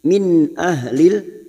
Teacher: nun sukun bertemu hamzah idhar halki nun sukun atau tanwin yang bertemu dengan 6 huruf ini dibaca jelas tanpa mendengung. Min ahlil huruf ha ahlil ahlil masuk ke alif lam qamariyah.